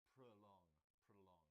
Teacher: It's got 2 syllables. The stress is on the second, and so the O in the first part sounds like prolong, prolong.